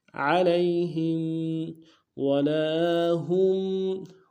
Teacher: ہا کو میم ساکن کے ساتھ ملانا ہے، میم ساکن میں غنہ کریں گے